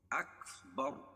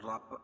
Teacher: بر وقف کی حالت میں رائے ساکنہ سے پہلے ہم با کے اوپر زبر ہے تو یہاں راپور ہوگی